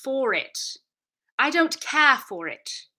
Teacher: So the non-rhotic thing is about landing on vowel R sounds, and the R's that we do still say are the onset R's, which lead into syllables